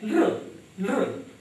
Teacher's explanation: यह ल जीभ आगे दांतों तक छूती है